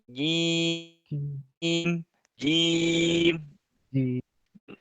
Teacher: Caranya ditahan nafasnya, jadi yang keluar cuma suara saja. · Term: huruf jimnya